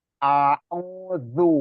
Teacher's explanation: Jadi A-nya itu hamzah ya biasa, tapi terdengar sudah bagus. Tadi A itu hamzah, baru lari ke ain.